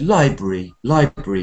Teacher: you stressed Library too you said library library going up